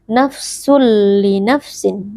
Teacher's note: kita memasukkan tanwin atau bunyi Nun yang ada pada tanwin ini ke dalam huruf lam tanpa berdengung · Nafsul li nafsin. Jadi huruf nunnya atau nun sukun pada bunyi tanwin ini tidak kedengaran lagi sehingga menjadi seperti huruf lam yang tasydid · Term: Idgham bilunah, idgham bila gunnah